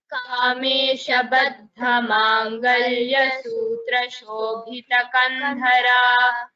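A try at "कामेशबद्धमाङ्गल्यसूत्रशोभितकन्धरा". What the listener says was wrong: Mahaprana, you could give little more stress. Baddha, Shobhita, Kandhara.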